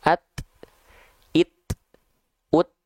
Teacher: kalau dia dalam kondisi sukun Huruf ta dan huruf Kaf yang punya sifat percikan nafas itu lebih terasa